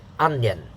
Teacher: two syllables the first one is stressed that has a higher pitch · they put an extra syllable after the n sound